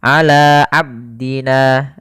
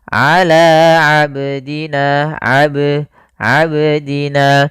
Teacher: bacaan qalqalah qalqalah artinya memantul kesalahan yang sering terjadi yaitu tidak memantulkan huruf qalqalah contoh ala abdina ah ini kurang tepat atau salah.